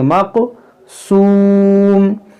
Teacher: ये काफ में कलकला करेंगे